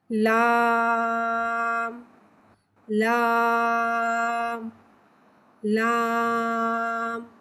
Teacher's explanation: लाम को एक अलिफ यानी 3 हरकत के बराबर खींच के पढ़ते हैं। लाम हुर्फ़े तरफिया है, ज़बान का किनारा और दवाहिक से सनाए तक के मसूड़ों से अदा होता है। लाम को मुंह खोल के अदा करके पढ़ेंगे।